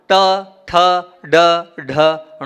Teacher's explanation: जीभ को जब आप पीछे ले जाएंगे वहां से णा का उच्चारण होगा